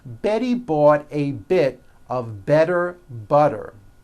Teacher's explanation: all the T's are pronounced as D's because they fall between vowels